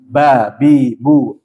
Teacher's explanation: ini Nun enggak ada mim maka harus masuk ke hidung sedangkan huruf ba bertemunya bibir atas dan bibir bawah tanpa disertai dengan gunah